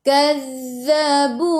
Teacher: Fil yammi bi annahum kazzabu, mim ada sukun, jelaskan mim izhar syafawi, kazzabu tekan ke dalam za, zal ada sabdu, za zidu hujung lidah keluar pada gigi depan